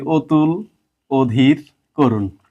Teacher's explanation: তিনটাতেই আমরা ও এর মত উচ্চারণ করছি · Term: সংবৃত উচ্চারণ